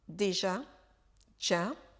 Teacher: on fait sauter le E